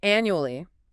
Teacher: Stress on the first syllable. 4 syllables.